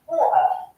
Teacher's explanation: When we cannot hear the sound T, but this sound is pronounced somehow, it is glottal T